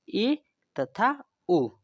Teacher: अर्ध संवृत स्वर के उच्चारण के द्वारा जो हमारा मुख है वो संवृत स्वरों के उच्चारण से थोड़ा अधिक खुलता है